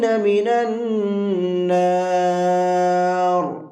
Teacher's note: جب را پر وقف کریں گے تو را ساکن ہو جائے گا، تو اس را کو بھی منہ بھر کے پڑھیں گے۔